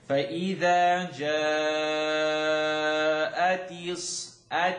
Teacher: You're going to stretch, then you're going to hold the shadda. Interesting, doesn't happen a lot in the Quran, but you're going to stretch and then hold. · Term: longest stretch